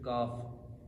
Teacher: یہ زبان کی جڑ اور تالو کے سخت حصے سے ادا ہوتا ہے، یہ زبان کی جڑ اور تالو کے سخت حصے سے ٹچ ہوگا۔